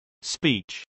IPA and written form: spˈiːtʃ (speech)